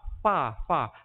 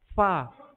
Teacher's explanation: Fa ni gigi atas. Kena bibir bawah.